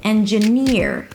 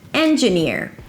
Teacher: Here the primary stress is on the last syllable.